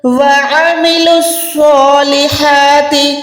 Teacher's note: عین جو ہے حلق کے درمیان سے ادا ہوگا. پروپر آپ نے الف اور عین میں فرق کرنا ہے.